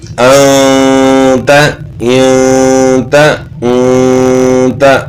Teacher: اور یہاں بھی ہوگا کیوں نون ساکن کے بعد اخفاء کے 15 حروف میں سے کوئی حرف آ جائے تو وہاں غنہ اخفاء کے ساتھ ہوگا. تو چونکہ یہاں تا حروف اخفاء میں سے ہے تو اس لیے غنہ ہوگا